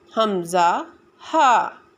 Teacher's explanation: number 2 پر آ جاتا ہے حمزہ ہا، یعنی حلق کے آخر سے جو سینہ کی طرف سے ہے